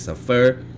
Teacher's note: This word happens to be stressed on the first syllable. This is indicated by the accent mark over the sami.